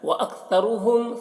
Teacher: سا کو زبان باہر نکال کر ادا کریں گے